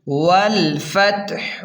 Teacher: ول، فتح زبر فت، ہا پیش ہو، والفتح، ہا کو حلق سے صاف نکالیں، ہا کو حلق کے درمیان سے صاف نکالیں